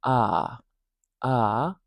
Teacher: it's a very low sound. Our jaw is very low. Our mouth is quite open for this sound. What happens in Canadian raising is this sound is raised up, raised up in the mouth, and it moves more to this sound, uh.